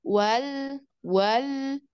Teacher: Ada awalnya tuh seperti mau manjang, tapi tidak sampai dua harokat. Nah, baru ke sukunnya. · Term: ditamtid